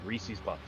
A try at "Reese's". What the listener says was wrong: Listen, if it rhymes with species, it's wrong.